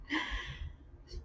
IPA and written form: ˈθæŋkfəl (thankful)